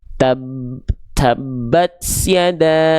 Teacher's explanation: Huruf ta nggak punya sifat sofir. Nggak boleh ada bunyi S-nya khususnya ketika sukun. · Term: percikan nafas